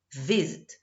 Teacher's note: Visit não dobra, porque a tonicidade está na primeira sílaba, no vi, visit. Então fica visit com ing, tranquilo.